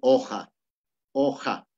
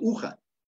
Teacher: si hay un fonema ja, esta u se convierte en una vocal abierta.